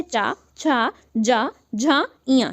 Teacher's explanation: ये 5 वर्ण जो है ये आपके तालु की सहायता से बोले जाते हैं या तालव्य की सहायता से बोले जाते हैं। · जब जीव आपकी तालु से टच हो तो आप समझ जाइए कि ये तालु वर्ण होते हैं